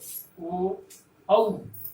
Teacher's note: कंठोष्ठ का अर्थ हुआ कि कंठ और ओठ दोनों स्थानों से वायु प्रक्षेपित होती है और उसका उच्चारण होता है।